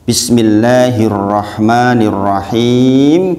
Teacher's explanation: Bismillahirrahmanirrahim berarti ada alif lam samsiah karena alif lam ketemu huruf samsiah atau idgham samsiah dimasukkan ke ra